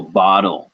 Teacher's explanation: the back of the tongue shoves up towards the roof of the mouth and so it's kind of like you're swallowing the sound